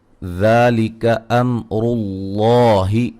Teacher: میم ساکن کا اظہار ہے اور را کو موٹا ادا کریں گے ، لفظ اللہ کو بھی موٹا ادا کریں گے، اس سے